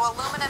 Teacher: the key is we are going to have four beats or four syllables it's going to be super short long short short